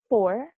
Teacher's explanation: The sound f as in for, we can classify it as a voiceless, labiodental, fricative